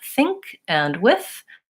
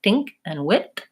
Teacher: instead of a th sound your language has a tendency to do a T sound